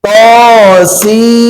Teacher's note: Sudah kita pelajari. Nun bertemu mim. Idgham bi-gunnah. Berarti dimasukkan. Nunnya dimasukkan.